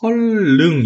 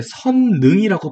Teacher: 실제로 이렇게 니은이랑 리을이 만날 때 이 리을이 니은 돼버리는 비음화 현상이 일어나는 경우도 있기는 하고요